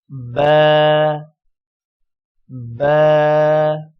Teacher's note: با ادا کرتے ہوئے اوپر والا ہونٹ اور نیچے والا ہونٹ آپس میں ملیں گے۔